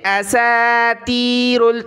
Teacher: یہ نقطے والی تا نہیں ہے، یہ بڑی طا موٹی ہے، اس کو کلر بھی دیا ہوا ہے کہ آپ نے موٹا کرنا ہے، سین کو باریک پڑھنا ہے